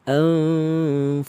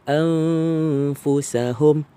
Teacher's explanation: Masa an tu, gigi atas sentuh bibir bawah. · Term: berjangkit